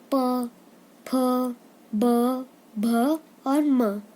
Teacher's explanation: अब तवर्ग में दांत से, जैसे त, थ, द, ध, न। और पवर्ग में जो ओष्ठ यानी कि होठ होते हैं वो मिलते हैं आपस में, जैसे प, फ, ब, भ और म।